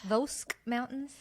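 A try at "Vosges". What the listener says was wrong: I don't think there's no K in it. So it's just Vosque. Very soft. Very quiet.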